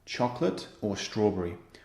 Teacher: You hear the rising, and then falling intonation. The final item is always falling intonation.